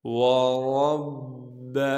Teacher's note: را کو موٹا کر کے پڑھیں گے، اور را کو آگے با سے ملائیں گے کیونکہ با پر تشدید ہے